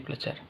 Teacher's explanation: Misalnya menjadi belajar, tapi karena ada dua R, maka R yang pertama diasimilasikan menjadi L, sehingga jadi belajar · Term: disimilasi fonemis